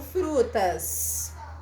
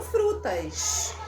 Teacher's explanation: Eu falo frutas. Eu dou aquela chiada básica lá no final